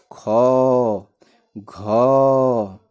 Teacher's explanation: महाप्राण जिसमें हकार की ध्वनि उत्पन्न हो।